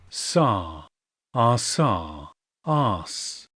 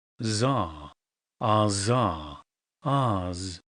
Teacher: こういう風にペアになっているものは、左が無声音、右が有声音っていうことです